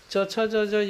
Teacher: च, छ, ज, ज, य जो होता है तालव्य से यानी तालु से बोला जाता है